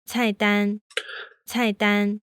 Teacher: the fourth tone doesn't go all the way down it only goes about halfway · in the 4-1 combination the fourth tone starts higher than the first tone